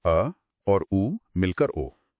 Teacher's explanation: जब ओ बोला जाता है तो आवाज की उत्पत्ति गले से होती है, लेकिन अगर होठों को गोल न किया जाए तो वो ध्वनि सिर्फ अ बनकर रह जाएगी। · ओ स्वर वास्तव में अ जो कंठ्य है और उ जो ओष्ठ्य है उसके विलय से बनता है। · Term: कंठोष्ठ्य